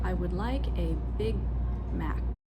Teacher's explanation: for a native English speaker, it's very natural for me to hold the G in big. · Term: unreleased